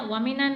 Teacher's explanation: नून नून ज़बर नन, नून मुशद्दद है, नून मुशद्दद पर गुन्ना किया जाता है। गुन्ना कैसे? नाक में आवाज़ छुपाना।